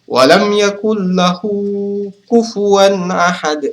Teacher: Mada qasirah sebab huruf ha bertemu dengan huruf selain Hamzah cara membacanya adalah dua harakat walam Yakun lahu kufuan ahad ini agak panjang dua harakat kufuan · kufuan ahad kufuan ahad ini adalah hukum bacaannya adalah izhar sebab huruf wau fathah tanwin bertemu dengan huruf hamzah dibaca jelas tidak berdengung sama sekali